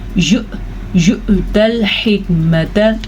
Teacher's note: حمزہ کے اوپر جھٹکا ضرور دیجیے گا